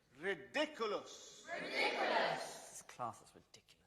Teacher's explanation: be seen as a piece of old or given information so the nucleus occurs earlier on the last piece of new information that is class